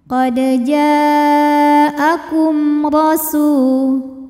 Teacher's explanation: Sebab mim sukun menghadapi huruf yang bukan mim atau ba, maka mim ini kita bunyikan dengan jelas. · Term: idhar syafawi